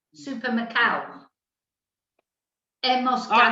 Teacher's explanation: instead of ado, they say ow. So instead of saying supermercado, they say supermercado.